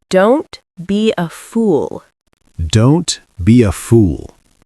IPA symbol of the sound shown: uː